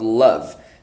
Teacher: Now, the end of love, it is produced in your larynx, so it is what we call voiced. Yes, it's a voiced sound.